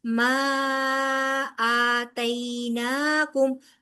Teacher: अलिफ मदा के बाद हमजा अगले कमले का पहला हरफ है। लिहाजा यहां पर मद जायज मुनफसिल होगी। फोर काउंट्स लंबा किया जाएगा।